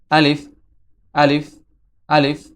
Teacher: এই মুখের খালি জায়গা হতে আলিফ হরফটি উচ্চারিত হয়।